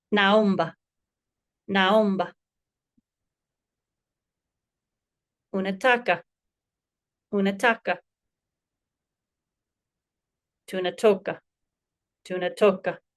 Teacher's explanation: The stress in Kiswahili always falls on the second to last syllable.